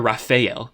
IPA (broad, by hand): rɑː.feɪ̯.ɛl